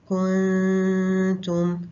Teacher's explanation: کچھ آواز جو ہے وہ منہ سے بھی باہر نکلے گی، لیکن مینلی کیا ہے کہ غنہ جو ہے وہ ناک کے ذریعے باہر آئے گا، 2 کاؤنٹس کے برابر غنہ ہوگا